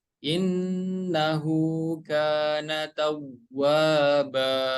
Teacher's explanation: Kemudian huruf wawunya lebih dihentak lagi.